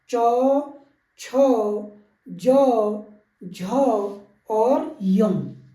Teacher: तालु से जो हमारे व्यंजन निकलते हैं वो निकलते हैं च वर्ग के